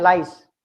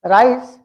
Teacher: When I say lies, the tongue touches to the upper part. When I pronounce rice, the tongue doesn't touch